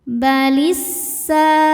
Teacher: Lalu ada hukum alif lam syamsiyah, sebab alif lam menghadapi huruf syamsiyah yaitu sin. Cara membacanya alif lam lewatin, kita masuk langsung ke sin atau disebut idgham syamsi. Balisa. Sa hukumnya mad tabi'i dhahiri sebab ada alif sebelumnya fathah.